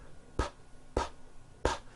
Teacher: saying the sound you feeling any vibrations in your throat no your vocal cords are not producing a sound